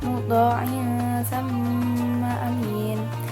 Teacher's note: Kemudian pada bacaan sama amin, nah itu terdapat hukum tajwid gunnah musyaddadah karena ada mim bertasydid. Cara bacanya didengungkan · ada tanwin kasroh bertemu dengan salah satu huruf ikhfa yaitu fa. Dibacanya samar-samar.